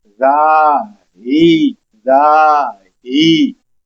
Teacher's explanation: हा सीने से आवाज आएगी इसको हम लंबा करेंगे